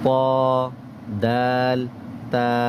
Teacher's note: জিহবার আগা সামনের উপরের দুই দাঁতের গোড়ার সাথে লাগিয়ে